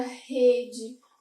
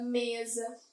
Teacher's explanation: eu tenho uma intensidade maior na penúltima sílaba